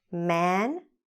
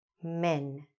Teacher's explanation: in the first one i opened my mouth quite a bit man in the second one i didn't